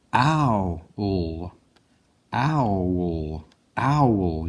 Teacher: You get a little bit of a W sound in there.